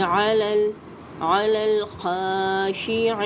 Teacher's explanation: خا مستعلیہ حروف ہے، پر کر کے ادا کریں گے، یا مدہ کے بعد کیا آئے گا، عارضی وقف، تو مد عارض وقفی ہو جائے گی، 3 سے 4 حرکات کھینچ کے اس کو پڑھیں گے۔